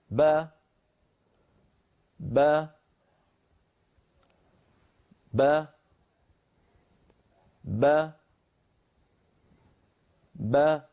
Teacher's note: تبتعد الشفتان ويبتعد الفكان، فبابتعاد الشفتين تخرج الباء وبابتعاد الفكين تخرج الفتحة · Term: الباء المفتوحة